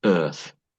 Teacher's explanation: her TH sounds very like a… like an F